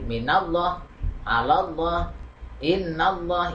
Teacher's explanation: karena lam jalalahnya didahului Fatah ya Ini dibaca tebal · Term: lam jalalah tafhim